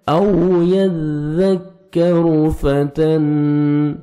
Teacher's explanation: تا کو باریک پڑھنا ہے تاکہ طا میں ساؤنڈ مکس نہ ہو۔ نون ساکن کے بعد حروف اخفا میں سے فا ہے، یہاں پہ آپ نے نوز میں ساؤنڈ لے کے جانا ہے۔